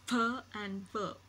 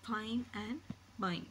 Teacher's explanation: we see the lower lip is the active articulator and the upper teeth are the passive articulator